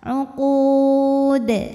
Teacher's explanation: Kemudian dalnya ini jika berhenti hukumnya adalah qalqalah kubra karena ada huruf qalqalah yang sukunnya ini tidak asli ya, melainkan karena kita berhenti. Dibacanya kita pantulkan dengan pantulan yang lebih besar, lebih berkumandang. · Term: Qalqalah Kubro